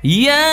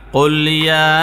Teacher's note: ইয়া, তিন আলিফ পরিমাণ টান দিবেন। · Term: মুদ্দে মুনফাসিল